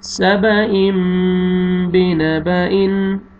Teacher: یہاں پہ دیکھیں تنوین کے بعد با ہے، آپ نے تنوین کے نون کو میم میں چینج کر کے غنہ کرنا ہے،